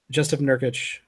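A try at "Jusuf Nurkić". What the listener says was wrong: Yusuf, yes. The J is silent, my friend.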